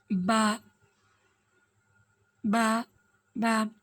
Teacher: आप बा को नोट करते वक्त देखेंगे कि जो हमारे दोनों होठ है य आपस में मिल रहे हैं आपस में मस् हो रहे हैं और दोनों हो जो जुबान · बा दोनों होंठों के तर हिस्से से